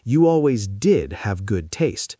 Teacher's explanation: She stresses the did to emphasize a past fact while making a little joke.